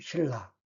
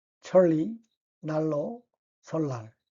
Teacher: 니은 and 리을 don't work well together, so one of them gives in. 니은 became 리을. Try both. One of them makes your tongue glide.